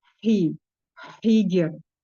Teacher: hi disempurnakan karena mempunyai sifat hambas dan rokhah, mengalir suara, mengalir udara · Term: huruf H